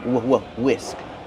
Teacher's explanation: The H is silent. Just use the W sound. WW whisk plus the short is sound like this is whisk.